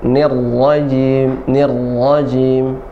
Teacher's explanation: Nir, jangan terlalu banyak getaran ro-nya.